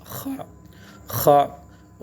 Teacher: خا گلے کے اوپر سے ایک خا غرغرہ کی سی آواز آ رہی